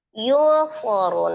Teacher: dibaca samar disertai dengan gunnah ya, dan nilai antara samar dengan gunnahnya sejajar sama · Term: ikhfa hakiki